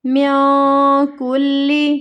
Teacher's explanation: کیونکہ اخفا ہو رہا ہے، یہاں پہ نون ساکن کے بعد اگلا حرف کاف ہے، حروف اخفا میں سے ہے، تو یہاں پہ ہمیں نون کی آواز کو چھپانا ہے